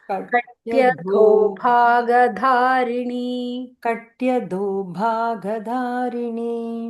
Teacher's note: Dha is also Mahaprana.